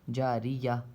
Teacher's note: اب جاریتن پہ سانس تو توڑ نہیں سکتے ہیں، تو سانس توڑیں گے تو یہ تا جو ہے ہا ہو جائے گی، جاریہ، یا ہا زبر یا ہو جائے گا۔